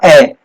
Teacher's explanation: ए के उच्चारण में होठों की आकृति गोल नहीं होती, गोल नहीं होती मतलब ये अवर्ताकार होगा।